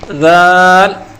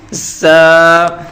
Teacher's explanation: ذال کو بالکل نرم پڑھنا ہے، ذال، اور زا کو سیٹی کے ساتھ سخت پڑھنا ہے